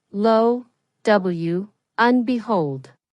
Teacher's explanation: There is a linking between low and and and and becomes a weak form un.